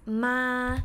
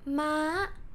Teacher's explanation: So this one is pronounced ma, flat tone, while this one is pronounced ma, or high tone.